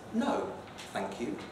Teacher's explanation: if you add thank you as a final tag then it often has a kind of low rise a bit like please